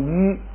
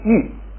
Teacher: 乌后边有个撒，所以还是读鱼， 撒呢还要把调摁下来，所以读玉，不但变成鱼，而且变成四声玉